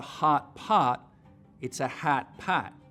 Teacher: that the light vowel which you know normally lives back here your tongue cupping low down in the back for an open ah sound moves forwards towards where trap used to be